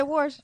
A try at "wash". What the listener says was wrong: She's trying to say wash. She puts an R in it every time. It's a St. Louis thing.